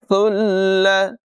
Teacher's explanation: تا کو بغیر سیٹی کے پڑھیں گے اور لام کے ساتھ ملائیں گے